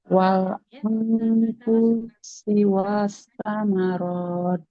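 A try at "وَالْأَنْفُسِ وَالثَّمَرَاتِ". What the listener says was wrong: Sinnya masih panjang. Wal anfusi was samarat.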